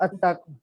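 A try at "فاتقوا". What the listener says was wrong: इत्तकू, ठीक है। इत्तकू, अत्तकू नहीं कहना, फाइत्तकू नार अल्लती वक़ूदुहा।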